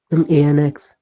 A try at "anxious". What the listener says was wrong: Don't say ANX and all. Angst. Angst. The first part is what is going to carry it again because only two syllables, right?